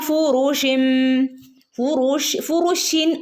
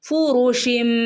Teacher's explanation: ഇവിടെ ഫുറുഷിൻ എന്ന് പറയുന്ന എന്ന് പറയുമ്പോൾ ഒരു നൂനിന്റെ ശബ്ദം വരുന്നുണ്ടല്ലോ അല്ലെ ആ നൂനിന്റെ ശബ്ദത്തെ മാറ്റിയിട്ട് അവിടെ മീമിന്റെ ശബ്ദമായിട്ട് മാറുന്നു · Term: ഇക്ലാബിന്റെ മീം